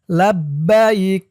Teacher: লাব্বাইক এখানে দেখুন থামার জন্য চিহ্ন দিয়েছে তো এখানে আপনারা থামবেন থামলে উচ্চারণ করবেন লাব্বাইক কাফের উপরে জবরটা সাকিন হয়ে যাবে থামার কারণে